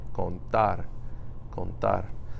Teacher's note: For this word again, contar. You're putting the stress on the A.